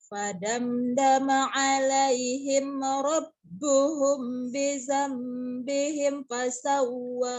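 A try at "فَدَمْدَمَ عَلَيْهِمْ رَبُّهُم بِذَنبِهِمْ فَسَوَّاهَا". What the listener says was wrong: Himnya jangan buru-buru. Fadamdama alaihim rabbuhum. Humnya selesaikan dulu. Lagi ini rabbuhumnya kan ifas safawi ditahan. Rabbuhum. Maksud saya yang ini nih, yang terakhir yang cepetan. Bidambihimnya. Bidambihim memang idhar safawi. Rabbuhum itu ifas safawi ditahan banget. Bidambihim, kamu tadi terburu-buru. Bidambihim. Bidambihim. Himnya tetap selesaikan ya. Tapi jangan ditahan.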